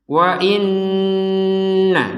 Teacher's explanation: nun bertasydid, dibacanya dengan dengungan. Wa inna, jadi dengung dulu di rongga hidung. Kalau rongga hidung belum berdengung, walaupun kita sudah mengucapkan i misalkan, wa i atau wa in, gak ada dengung, wa in, gak ada dengung, didengungkan dulu.